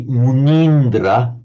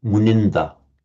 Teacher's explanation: It would be mindra with a long e in Sanskrit but it's shortened because of the following consonant cluster in parley. Minda sage Lord.